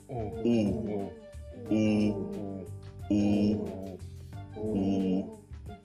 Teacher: Губы сложены трубочкой, вытянуты. Язык сильно оттянут назад. Воздух выдыхается в кольцо губ.